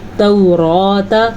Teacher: را کو پر پڑھنا ہے کیونکہ را کے اوپر کھڑی زبر ہے